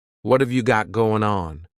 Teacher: that final g in the word going is going to be cut off and we'll just say going let's try to say that all